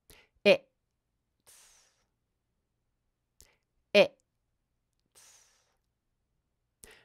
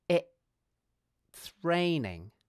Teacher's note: Notice that I pause for quite a long time before I do the /ts/ sound. Notice also that I keep my tongue at the bottom of my mouth during the gap. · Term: glottal stop